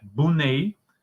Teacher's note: The omission of the r in cluster br, as in Brunei, that would be pronounced like Bunei